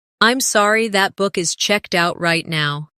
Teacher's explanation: Stress checked out to make it clear.